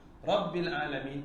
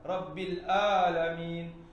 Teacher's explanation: Dan alamin, hati-hati huruf ain. Ain betul-betul dikerengkung tengah-tengah. Tempat kita kena cekik. Kan? Kalau orang cekik, kita akan terkeluar huruf ain tu.